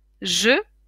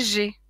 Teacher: les lèvres arrondi c'est pour le e en gauche et les lèvres écarté c'est pour le et à droite